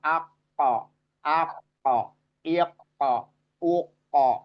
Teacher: adanya di bagian dalam atau pangkal lidah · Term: qof